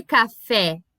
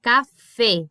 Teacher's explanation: Esse som aberto, ele não existe. Ele é sempre fechadinho.